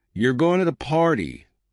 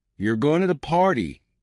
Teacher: with a flat tone, it's just a statement. But if you raise your voice at the end, "You're going to the party?" it becomes a question.